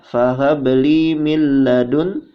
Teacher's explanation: nun sukun bertemu dengan lam, hukumnya idgham bila guna, ya, dibaca tidak dengung